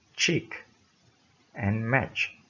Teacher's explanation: Air is blocked with tongue just beyond the alveolar ridge